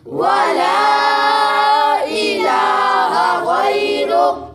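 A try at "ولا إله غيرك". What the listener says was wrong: ولا الہ غیرک۔ لام کو تھوڑا سا لمبا کریں گے، لام کے ساتھ الف بھی ہے اور اوپر مد بھی ہے، اس لیے لام کو تھوڑا سا لمبا کیا جائے گا۔ ولا الہ غیرک،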